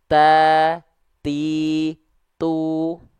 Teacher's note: sebelum keluar vokal a iu itu ada perecikan nafas dulu